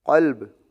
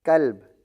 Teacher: قلب موٹا کر کے پڑھا دو نقطوں والا قوف، اس کا مطلب دل۔ کلب باریک پڑھا کتاب والا